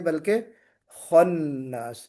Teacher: خا کو ہم پر کر کے پڑھیں گے، خا موٹا حرف ہے نا؟